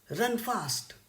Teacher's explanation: stressed syllables it is known as spondee for example run fast here run is also stressed and fast is also stressed